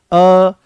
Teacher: ये अर्ध विवृत्त हैं। अर्ध विवृत्त का मतलब यह है कि मुख यहां पर आधा खुलेगा।